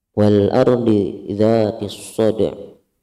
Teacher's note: alif lam bertemu dengan hamzah al-a. Hukumnya adalah izhar qamariyah. Dibaca jelas sebangsa qamar, sebangsa bulan.